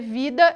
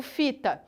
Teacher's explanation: o v e o f Eles saem do mesmo lugar no nosso aparelho fonador